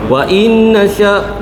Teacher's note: Wainnasya nun ada tanda sabdu kita dengungkan dua harakat ya. Wajibul ghunnah.